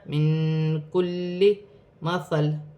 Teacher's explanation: نون ساکن میں اخفا ہوگا، کاف حرف اخفا میں سے ہے